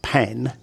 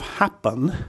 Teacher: you should feel a little puff of air with the P in pen because it's aspirated. However, on the second syllable of happen, you shouldn't feel the same puff of air because it's unaspirated.